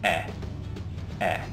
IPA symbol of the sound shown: e